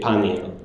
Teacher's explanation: second vowel in the hiatus is deleted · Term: vowel hiatus resolution